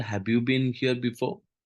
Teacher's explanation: begin with a lower pitch and usually end in a rising pitch